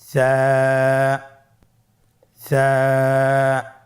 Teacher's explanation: কোন জায়গা থেকে স্ক্রিনে দেখা যাচ্ছে হারাফটির মাখরাজ হলো উচ্চারণ স্থান জিহ্বার আগা সামনের উপরের দুই দাঁতের আগার সঙ্গে লাগিয়ে উচ্চারিত হয়